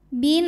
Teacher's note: nempel di huruf ba bin nunnya hukumnya adalah gunah musyaddadah karena Nun bertasdid cara bacanya didengungkan tahan dengungannya kurang lebih dua harakat